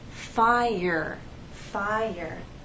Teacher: there is the Y sound that connects the two vowels